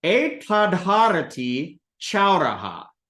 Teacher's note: So when ta, unvoiced, meets ha, also unvoiced, ha becomes voiced aspirate of ta, which is da, and then ta turns into da.